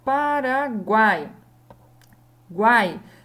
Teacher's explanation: Eu não falo separado o gu desse ai. Eu falo tudo junto. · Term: tritongo